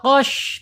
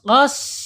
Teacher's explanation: Shin ya, secara makhraj ada di alisan ya, yaitu ujung lidah menyentuh pangkal gigi seri bawah. Secara sifat al-hamas, kemudian secara sifat yang lainnya yang tidak berlawannya itu sofir. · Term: sin